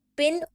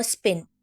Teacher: प दोनों टाइम अलग तरीके से बोला जाता है स्न में पी एस्पिरेटर है जहां पर हवा का झटका निकलता है